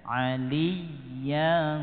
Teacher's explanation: li kita tekan gitu ya, harus menekan aliyyan, bukan dipanjangkan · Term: ditekan